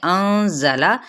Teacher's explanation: ساتھ میں 4 حرکت اس کو لمبا بھی کھینچیں گے، انزلہ نون پہ اخفا ہوگا اور زا سختی کے ساتھ